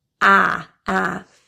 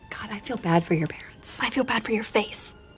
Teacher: the a vowel in the word bad is stressed so that a vowel will be fully pronounced the a involves an open jaw and also retracted smile ah